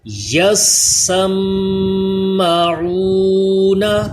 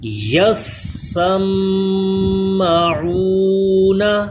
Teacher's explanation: Next پھر یا کو سین سے ملائیں، اس پہ تشدید ہے، آگے سین کو میم سے ملائیں، اس پہ بھی تشدید ہے، تو میم مشدد میں غنہ بھی کریں، آئین کے مخرج کا خیال رکھیں۔ یسمعون، میم مشدد میں ایک الف کے برابر غنہ